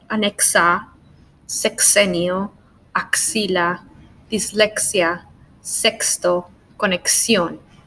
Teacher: With the X, we pronounce it as a x, x, x, like a K and an S. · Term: KS